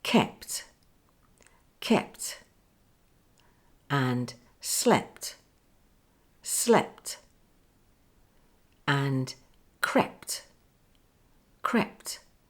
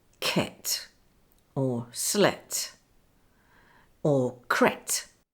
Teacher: Say kept, kept, and slept, slept, and crept, crept. You can't hear the p sound, but it's important to close your lips for p and hold the air until the explosion for t. Do not say ket or slet or cret.